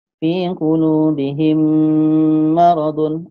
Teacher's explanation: Jadi bunyi mim ni masuk kepada bunyi mim. Sebab hurufnya sama jadi dah ya kita dengar hanya sama-sama bunyi mim ya. · memasukkan bunyi mim mati apabila bertemu dengan hurufnya mim. Jadi maksudnya di sini mim jumpa mim ya. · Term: idgham mimi, idgham mutamasilain